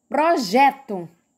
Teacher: a sílaba mais pronunciada mais forte foi o jé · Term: sílaba tônica